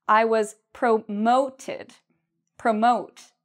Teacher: we put the stress, or we say the second part louder and longer